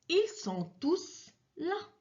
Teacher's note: tous est un pronom à la fin duquel le S est bien prononcé